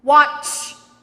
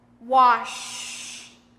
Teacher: When I make the ch sound in watch, you will notice that it's a forceful sound. I'm pushing a lot of air out. And it's also short. Watch. When I make the sh sound in wash, it's longer and not as forceful.